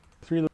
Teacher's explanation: So three starts with that th sound, the voiceless dental fricative.